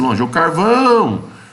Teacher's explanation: a sílaba tônica é o vão você vai colocar o vão aqui ó tá e atrás tem